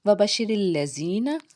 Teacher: شین جو ہے حرف شجریہ کا حرف ہے، جب اس کو ادا کریں گے آواز منہ میں پھیلے گی، اس کے اوپر تشدید کا سائن ہے، 2 بار پڑھا جائے گا شین۔